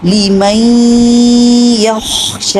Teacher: یخشی میں خا کو بھی اچھا کلیئر کیجئے اور شین کو 2 حرکت لمبا، صرف 2 حرکت لمبا کیجئے، ان فی ذالک لعبرۃ لمن یخشی، ان فی ذالک لعبرۃ لمن یخشی، ان فی ذالک لعبرۃ لمن یخشی۔